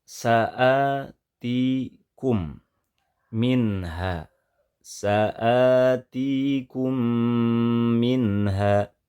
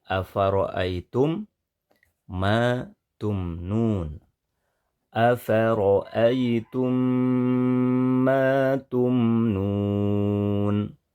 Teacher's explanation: itu dengan cara menggabungkan kedua huruf mim ini menjadi satu ya huruf mim yang pertama digabungkan dileburkan kepada mim yang kedua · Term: idgham mitlain shgir